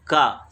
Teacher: का शब्द जब हम बोलते हैं तो बहुत कम मात्रा हवा की निकलती है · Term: अल्प प्राण ध्वनि